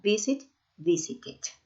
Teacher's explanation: En el caso de visit, sí pongo una sílaba extra porque termina en T